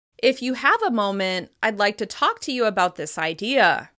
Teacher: You can hear that slight rise in pitch where the comma appears in writing. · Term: non-final intonation